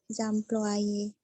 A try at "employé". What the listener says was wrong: Employé, ya, bukan employé. Ya, O dan Y, huruf Y itu kan dibaca I. Jadi O dan I bunyinya. Tapi kan ingat, tidak ada dua bunyi vokal. Ya, itu jadi satu, jadi wa, jadi employé.